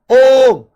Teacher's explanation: ये जो बीच वाला उ है इसके उच्चारण में लगभग तीन गुना समय लग रहा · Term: प्लुत स्वर